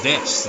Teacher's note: It's like when people say desu. It's like usually it gets to be pronounced des. The u is silent.